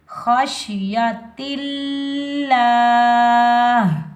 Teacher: اب لفظ اللہ سے پہلے زیر آ رہا ہے تو لفظ اللہ کو ہم باریک پڑھیں گے.